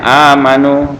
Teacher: Kemudian hamzah yang mati diganti dengan mad agar membacanya tidak terlalu berat. Nah, panjang bacaan mad badal sama dengan mad tabi'i, satu alif atau dua harokat.